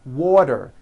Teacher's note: letter T Falls between two vowel sounds which are voiced so if it falls in the middle of vowels then the t is pronounced as a d and the whole word is voiced